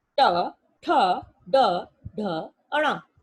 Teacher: जब हम ट वर्ग के बारे में जानते हैं तो हमारी जीवा हमारे तालु से स्पर्श करती है